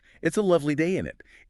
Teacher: It's an extreme reduction where the full auxiliary verb and pronoun collapse into 2 quick syllables